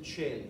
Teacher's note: C followed by the diphthong AE is pronounced as a CH